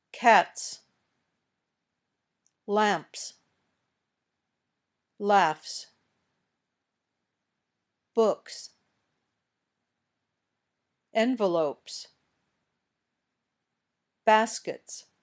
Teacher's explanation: the ending sounds like s we don't add an extra syllable to the word